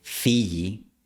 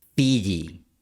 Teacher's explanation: Si tú pides a un hablante nativo de español que pronuncie Fiji, el sonido de la Y que vas a escuchar es una consonante fricativa, o sea, un ruido de fricción